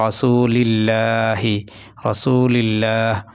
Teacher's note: এই যে আল্লাহ শব্দের আগে জের হয়েছে এজন্য এই আল্লাহ শব্দটা চিকন হবে